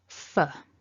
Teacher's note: we've got that f followed by a weak uh